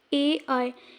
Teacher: ए ऐ को बोलने के लिए हमारे कंठ और तालु दोनों का उपयोग हो रहा है, इसलिए इन्हें कंठ तालव्य वर्ण कहते हैं।